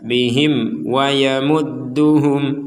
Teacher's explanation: Mim mati. Mim mati atau mim bertanda sukun bertemu wau. Kita baca jelas.